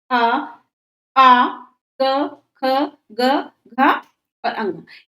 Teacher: कंठ से बोली जाती है अ आ क ख ग घ और अंग ये कंठ वर्ण है